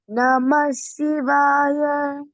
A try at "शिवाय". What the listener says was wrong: It is not Sivaya, Shivaya.